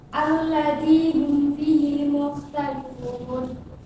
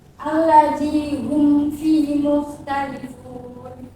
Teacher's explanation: Nah, di sini bacaannya harus jelas. Jadi mim mati bertemu dengan huruf selain mim dan ba. Jadi kedua bibir itu harus dirapatkan. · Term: idhar syafawi